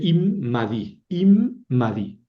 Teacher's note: El dages es fuerte. Entonces aquí hay dos mems.